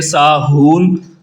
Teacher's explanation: اس ہا کو حلق کے نیچے والے حصے سینے کی طرف سے نکال کر پڑھتے ہیں، اور اس کو آخر پہ تھوڑا سا لمبا مد عارض کی وجہ سے کریں گے۔ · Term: دو چشمی ہا